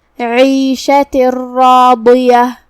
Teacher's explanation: ضاد کی ادائیگی زبان کے کروٹ اور اوپر کے داڑھوں کے جڑ سے ہے · ہم یہ تنوین کو را میں داخل کر کے تشدید کے ساتھ بغیر غنہ کے یہ حکم کو ادا کریں گے · را کا حکم ہے تفخیم، کیونکہ اس پہ زبر ہے ، جو کہ اس کے بعد مد الف ہے، تو ہم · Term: ادغام بغیر غنہ